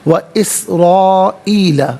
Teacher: و اسرائیل، یہاں پر آپ دیکھیں را پر زبر، را کو پر کر کے پڑھیں گے